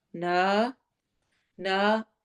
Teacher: نا میں دو حرکہ ہم نے لمبا کرنا ہے